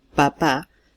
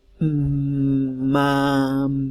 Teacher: Si decimos a, podemos hacer durar una a mucho tiempo, mientras que si decimos p, decimos papá, o mamá, fíjense la diferencia. En papá, nosotros no podemos hacer durar la P, podemos hacer durar la A y decir pa, pero la P siempre va a ser cortita. En cambio, si decimos mamá, podemos hacer durar la M y podemos hacer durar la A. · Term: duración